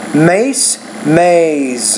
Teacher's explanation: when the Z's at the end of the word the vowel before it should be longer